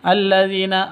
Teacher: dzi panjang dua ketukan karena ada ya mati diawali dengan kasrah mad asli